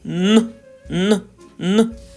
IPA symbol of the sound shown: н